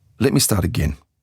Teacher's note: Your voice needs to be steady. And you have to have falling intonation at the end, not rising. It's not supposed to sound like a question or panic.